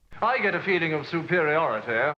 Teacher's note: he has a lax vowel on the end of superiority